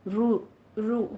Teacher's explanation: وجعلناها رجوما للشیاطین، رو، رو ہونٹ گول کیجئے، رائے مفخمہ ہے، گول ہونٹ کر کے پڑھیں گے، اس کو ضمہ ہے